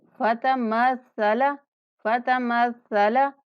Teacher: सा को पढ़ते हुए सीटी जैसी आवाज़ नहीं आनी चाहिए। सा को मखरज जो है वो नरमी से पढ़ने वाला है।